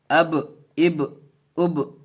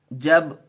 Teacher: ہونٹ دونوں ملیں گے اور مل کر کے تھوڑا سا پھر کھل جائے گا جلد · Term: قلقلہ